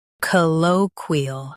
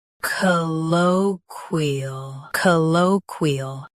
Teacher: Stress low. Keep qui clear and ol soft.